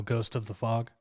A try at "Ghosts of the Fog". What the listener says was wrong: It's ghosts, as in Yeah, so how I say it, I miss the S often, but it's actually an S on the end of ghosts.